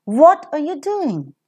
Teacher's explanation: if doing is a nucleus that will receive a falling tone